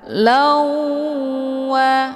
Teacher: harokat tanwin fathah dimasukkan ke dalam huruf waw atau dileburkan dengan cara ditekan kemudian ditahan lebih kurang 2 kali ketukan. Lawa. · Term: idgham bi ghunnah